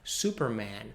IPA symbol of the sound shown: æ